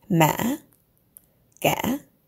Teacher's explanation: your voice goes up like you're asking a question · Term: question tone